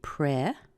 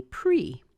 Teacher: You can do it in two ways. You can say pre. So this is the E as in, let's say, egg or head. Or you could say pree. Pree as in E as in see or me.